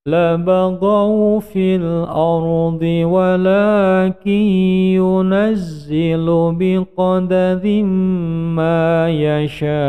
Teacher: Ra-nya tipis, ini juga tipis atau tarkik.